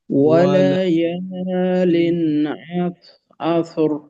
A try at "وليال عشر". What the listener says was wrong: عشر شين، وليال عشر، আচ্ছা, শেষে রয়ে যেন তাকরার হয়ে না যায়, অর্থাৎ এইভাবে বারংবার জিহ্বার আগাটা উপরের তালুকে যেন স্পর্শ না করে, বারংবার হবে না। ওয়ালায়ালিন আশর,